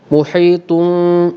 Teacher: bibir bersentuhan secara sangat ringan tidak dikembangkan dan tidak dibuka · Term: hukum iqlab